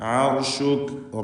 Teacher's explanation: റാ സാക്കിനത്താണ്, തൊട്ട് മുമ്പിൽ ഫത്ഹുണ്ട്. റായിനെ തടിപ്പിച്ച് ഉച്ചരിക്കണം. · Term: തഫ്ഖീം